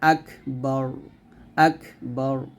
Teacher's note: এখানে রটা মোটা করতে হবে